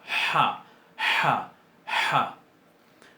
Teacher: Se pronuncia más fuerte. Es una de las guturales típicas de las lenguas semíticas. Típicas. Y se pronuncia bien atrás en la garganta. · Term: Het